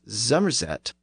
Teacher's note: One of the most notable traits of this dialect region was the tendency to pronounce the initial S sound as a Z, and the initial F sound as a V.